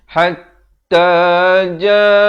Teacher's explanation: Ja dipanjangkan 4 atau 5 harakat.